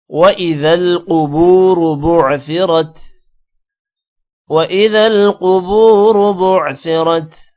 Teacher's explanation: قوف موٹا ہوگا، با کے بعد واو ہے لمبا کریں گے اور را بھی موٹا ہوگا۔ بُعْثِرَتْ، را یہاں پر بھی موٹا ہوگا۔